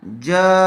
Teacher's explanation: مد متصل کا قاعدہ ہوگا، یعنی تھوڑا زیادہ کھینچ کر پڑھیں گے۔